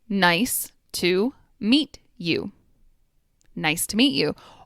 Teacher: when speakers are talking quickly, the T and Y sounds will combine into a ch sound.